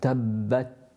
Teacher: my tongue has touched the gums above the central incisors, but because I've not had a burst of air after I've done that, then you can't hear the Ta. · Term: makhaarij of the Ta